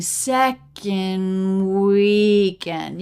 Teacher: the D in second is sometimes dropped especially when the next word begins with a consonant I don't really hear much of a d you can think